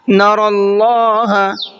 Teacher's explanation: حتی، ح کو حلق سے نکال کر کے پڑھنا ہے، حتی نہیں پڑھنا ہے۔ نر اللہ، نرا کے را کو منہ بھر کے پڑھنا ہے